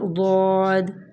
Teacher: عموماً ضاد پڑھتے ہوئے ہم اسے ضو بنا دیتے ہیں کہ زبان کے موٹے کناروں کو، جو زبان کا موٹا کنارہ ہے وہ اوپر والی داڑھوں کی جڑ سے لگے تو کیا ہوتا ہے، اور زبان کی جڑ کو تالو کی طرف بلند کرنے سے ضاد ادا ہوتا ہے. · ضاد کی آواز بہت موٹی اور نرم ہوتی ہے